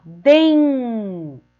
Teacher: Ó, den. O N está no final da sílaba. Então, o som dela é nasalizado. Sai pelo nariz.